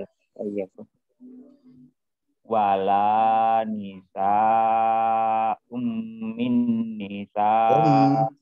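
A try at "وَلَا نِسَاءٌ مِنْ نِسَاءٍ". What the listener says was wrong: Dengungnya kurang lama. Ini dengung semua ya.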